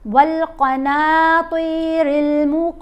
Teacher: نون کو ہم نے کھینچ کر پڑھنا ہے 1 الف جتنا لمبا